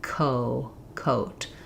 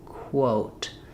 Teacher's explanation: When I'm saying quo, I have to start k with my mouth open and then briefly close my lips before the O. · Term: the k to the w